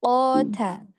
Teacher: qafnya mau lebih bulat lagi sedikit